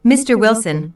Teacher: notice the rising intonation on Mr Wilson which is used to address someone